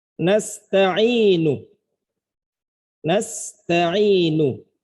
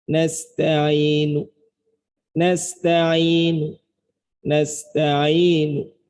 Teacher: Nah, ujung nu-nya ini dibaca sebagian harokat saja.